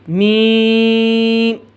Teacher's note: میم ناک سے ادا ہوتا ہے۔ میم اور نون کو ناک سے ادا کرنا واجب ہے